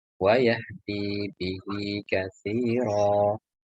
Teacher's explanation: Di ini panjang ya, ada ya sukun setelah dal, kemudian ada ya soghiro setelah hak dibaca panjang